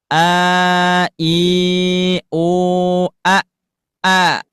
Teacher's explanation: Karena dibaca panjang dengan cara jangan sampai masuk ke hidung. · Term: aljauf